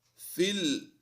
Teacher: فا کو لام کے ساتھ ہم ملائیں گے، یا خالی ہے یا کو سائلنٹ رکھیں گے